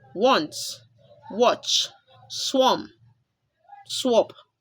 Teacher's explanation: letter A makes the short vowel sound aw as in wants, watch, swamp, swap.